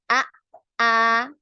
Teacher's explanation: ketika ditasdid ya huruf hamzah ini terputus ya pengucapannya ya.